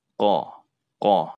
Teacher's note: huruf yang keluar melalui lidah ya tapi lidah bagian dalam yang terdalam yang dekat dengan tenggorokan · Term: huruf qaf